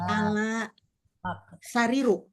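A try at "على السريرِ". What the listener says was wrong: Ala sari. Ala sariri. Tadinya as-sariru berubah menjadi as-sariri.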